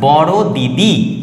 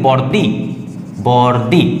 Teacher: দুটো দি ছিল সমান অক্ষর ছিল একটা অক্ষর হারিয়ে গেল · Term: সমাক্ষরলোপ